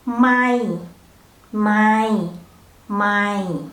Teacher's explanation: The word mai, the tone is in the middle but a little bit down because ma itself is the low class.